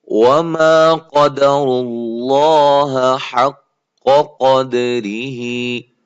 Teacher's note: قاف کو موٹا کرنا ہے, اور را بھی موٹی ہو رہی ہے, لفظ اللہ کلام بھی پیچھے پیش آنے کی وجہ سے موٹا ہو رہا ہے.